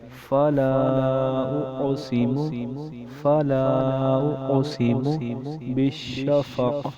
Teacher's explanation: فلا اس کے اوپر بھی مد منفصل آ گئی کیونکہ حمزہ دوسرے کلمے میں آ گیا۔